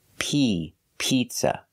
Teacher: the first vowel is a long e like green beans